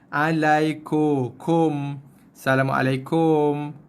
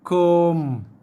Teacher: Kaf baris depan bunyi ku, bukan ko.